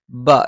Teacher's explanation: ബ രണ്ട് ചുണ്ടിൽ നിന്നാണ് മേലെ ചുണ്ട് അല്പം പുറത്തേക്കും താഴെ ചുണ്ട് അല്പം ഉള്ളിലേക്കും കയറി നിൽക്കും